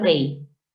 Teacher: la fuerza de voz recae en la vocal débil, la I, y por lo tanto debo separar en sílabas distintas la E de la I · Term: hiato acentual